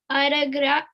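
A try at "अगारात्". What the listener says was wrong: there is a line on the letter here, it's long A. O ga is long A.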